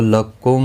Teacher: یہاں پر ادغام شفوی ہوگا، غنہ کے ساتھ پڑھیں گے